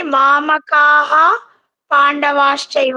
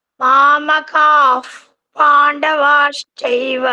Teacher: ವಿಸರ್ಗ ಬಂದ್ಮೇಲೆ ಪಾ ಬಂದ್ರೆ ಫ ಅಂತ ಪ್ರೊನೌನ್ಸ್ ಮಾಡ್ಬೇಕು. ಶೆಫ್ ಅಂತೀವಲ್ಲ, ಆ ಎಫ್ ಸೌಂಡ್ ಬರ್ಬೇಕು.